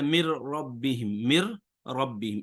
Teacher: یہ نون را میں تو گیا ہے، را کی شکل بدل کے را میں گیا ہے. تو یوں سمجھ لیں اصل میں اب اس کی اصل صورت جو ہم نکالیں اگر، تو وہ یہ بنتی ہے مر ربہم، ایک بار مر اور دوسری بار ربہم، گویا 2 را کا یہاں پہ اکٹھے ہو گئے ہیں.